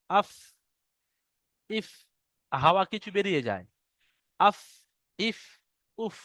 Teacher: নিচের ঠোঁটের ওই ভিতরের অংশটা ভিজে অংশ, এবং সামনের উপরে দুই দাঁতের আগার সাথে লাগিয়ে উচ্চারিত হয় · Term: ফার মাখরাজটা